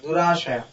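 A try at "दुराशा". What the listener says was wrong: Not Durashraya. Durasha. No, there's no R. There's no R after Sh. Ashraya is one word, and Asha is another word. In the verse it comes up as Dushaya, Durashaya, not Durashraya. It's a different word altogether.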